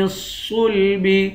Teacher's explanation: صاد کو موٹا پڑھیں گے